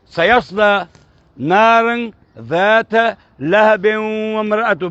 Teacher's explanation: با کے اوپر باؤنس نہیں ہوا کیونکہ میں نے اس کو ملا دیا آگے